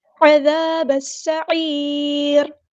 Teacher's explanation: جب بھی را ساکن سے پیچھے یا ساکن آئے تو ہم وہ را باریک پڑھتے ہیں، لائٹ ادا کرتے ہیں